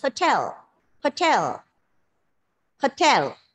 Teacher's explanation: are pronouncing the word hotel in the wrong way it's hotel give the stress on the second syllable and do it with the plosive · The unstressed syllables are reduced to the schwa.